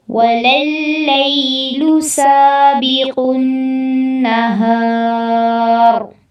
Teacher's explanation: وَلَلَّيْلُ میں یا ساکن سے پہلے زبر ہے تو یہاں پر لین ہوگا۔